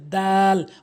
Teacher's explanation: জিহ্বার আগাটে নিয়ে সামনে দুইটি দাঁতের গোড়াতে লাগাবেন।